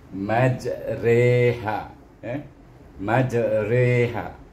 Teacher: dia bukan ra, dia bukan ri, iaitu re bunyinya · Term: imalah